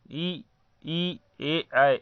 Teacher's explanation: ई, ए, ये सभी नहीं गोला बना रहे हैं, इसीलिए ऐसे शब्दों को अवृत्तमुखी स्वर कहते हैं।